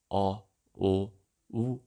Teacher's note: The last 3 cardinal vowels, O, U, on the other hand, are rounded because the lips are rounded during articulation